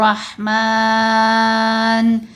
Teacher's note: जैसे हम सूरा रहमान का पहला लफ्ज़ पढ़ते हैं और रहमान, तो मीम को क्यों इतना लंबा किया है, क्योंकि खड़ा ज़बर के बाद नून को साकिन पढ़ना है, मद्दे आरिद लगेगी। फिर हरूफ मद्दा के ऊपर वक्फ आ जाए या हरूफ मद्दा के बाद साकिन हरफ पढ़ा जाए, दोनों सूरतों में मद्दे आरिद लगती है।